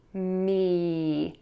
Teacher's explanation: Put your lips together for that M, mm, air moves out of your nose, then smile, and your tongue will be high and flat in your mouth for that long E